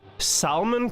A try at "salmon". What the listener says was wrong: Such an emphasis on the L in salmon is crazy.